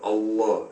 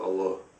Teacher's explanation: The difference is mainly the elongation of the L, Allah, as opposed to Allah.